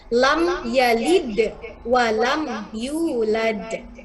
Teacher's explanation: Ada mim mati bertemu ya, izhar syafawi juga, sehingga dibacanya jelas dan tidak usah direndam.